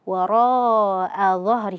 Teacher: mad wajib muttasil ya dibaca 4 sampai 5 harakat